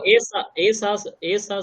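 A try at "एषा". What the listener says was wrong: আমি শুনছি এষাহ, এষা এরকম করো, এষা।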